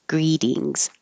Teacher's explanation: In greetings, the T changes to a D. Greetings. By itself, greed.